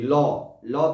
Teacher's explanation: দুই পাশ দিয়ে বেরিয়ে যাচ্ছে, তাই এর নাম পার্শ্বিক ধ্বনি, দুই পাশ দিয়ে বাতাস বেরোচ্ছে